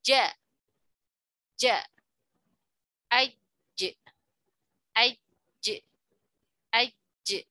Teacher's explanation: huruf Jim Tengah lidah bertemu dengan langit-langit